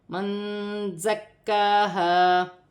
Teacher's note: کاف مشدد بھی ہے، اسے جمع اور سختی کے ساتھ پڑھا جائے گا، 2 مرتبہ پڑھا جائے گا، اور کاف پر کھڑی زبر بھی ہے، اسے کھینچ کر بھی پڑھا جائے گا، جیسے من زکاہا۔